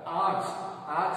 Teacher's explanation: आंच हम नाक से बोलते हैं, तो यहाँ पर अनुनासिक आएगा